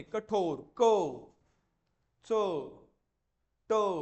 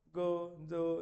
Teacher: पण तसं ग ज म्हणजे एवढी ताकद, म्हणजे मृदू उच्चाराचे वर्ण, हे कठोर उच्चाराचे वर्ण, यांचा उच्चार करताना जास्त ताकद लागते, त्याला कठोर म्हणायचं, यांना मृदू म्हणायचं. ठीक आहे.